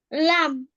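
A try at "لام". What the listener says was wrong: টেনে বলতে হবে না? একটু টেনে বলেন।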